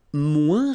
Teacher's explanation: Remember, we don't pronounce the final S.